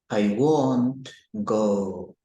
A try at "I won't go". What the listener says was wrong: So this is tricky because it sounds like you're saying want, like I want something.